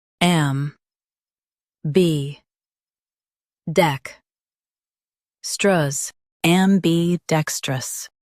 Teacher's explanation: Stress dec and keep am light.